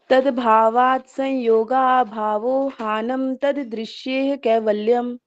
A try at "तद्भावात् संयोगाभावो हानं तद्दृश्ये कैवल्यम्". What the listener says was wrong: दृश्य, हाँ या भी नहीं है इसमें, आपका या का उच्चारण थोड़ा सा कम करना है यहाँ पे। तद्भावात संयोगा भावो हानम तदृशे कैवल्यम।